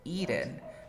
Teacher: why do you say eaten? Because you have a T between two vowel sounds and you pronounce like R